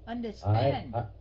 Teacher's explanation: Nhấn cái âm thứ ba, stretch on the last one. Last syllable, I mean.